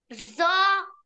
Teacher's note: জ স ওটা না, এরকম বলতে হবে জিহ্বার আগা সামনের উপরে দুই দাঁতের আগার সাথে লাগিয়ে মোটা আওয়াজে জ উচ্চারিত হয়।